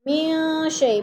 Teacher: من شیء، من پہ اخفا ہے، نون ساکن کے بعد شین حروف اخفا میں سے ہے تو ادھر اخفا کریں گے، آواز کو ناک میں چھپا کر پڑھیں گے